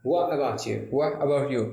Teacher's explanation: what को आप what बोले, यानी t को silent करते हैं